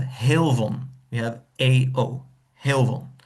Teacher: so the vowel breaks due to the back vowel in the following syllable